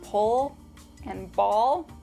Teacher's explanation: the dark L is in words like pull, And ball